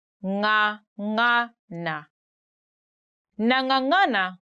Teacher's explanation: you stick your tongue at the back upper part of your mouth and then the voice comes through your nose